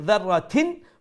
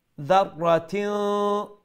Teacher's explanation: What are we hiding? We are hiding the n, the noon sound. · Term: ikhfa